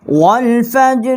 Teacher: یہ را جو ہے اس کے نیچے زیر ہے، اس لیے ہم نے اس کو نرم پڑھا ہے